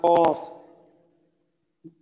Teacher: জিহ্বার 4 নম্বর মাত্রা আছে। জি জিহ্বার গোড়া তার বরাবর উপরে তালুর সাথে লাগাইয়া উচ্চারিত হয়